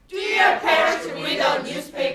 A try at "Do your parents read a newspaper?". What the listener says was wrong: 근데 read 할 때는요. 그냥 read 이게 아니라 R 사운드는 입술을 모아주셔야 돼요. 입술이 쭉 나와야지 그냥 우리 이렇게 자연스럽게 하는 것이 아니라 좀 땡긴다라고 생각이 들었을 때 근육이 만들어지는 거니까 입술 땡기시면서 여러분들 우리. R 사운드라고 하는 것은 어디예요?